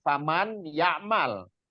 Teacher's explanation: itu dibacanya dengan ghunah bunah dengan ghunah itu dengan mendengungkan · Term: idgham bunah